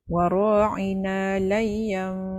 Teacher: bunyi nun mati itu ditukar kepada bunyi mim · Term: iklab